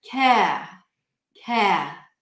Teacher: So you just hear the vowel, the tongue doesn't come up for the R.